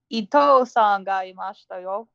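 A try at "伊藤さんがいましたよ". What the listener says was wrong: Ito-san sounds like he's a piece of thread. Ito-san ga imashita yo. Yeah, the long oohs are a little bit important.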